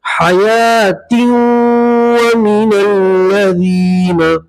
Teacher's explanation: یہاں یہ تا کو واو کے ساتھ ادغام کریں گے اور گننا کریں گے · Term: ادغام مع الغنہ